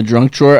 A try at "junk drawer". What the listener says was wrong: Are you saying drunk drawer? You're saying drunk drawer.